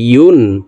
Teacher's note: ইয়াকে হামজার উচ্চারণ করা যাবে না, ইয়ার উচ্চারণ জিহ্বার মধ্যখান থেকে হবে।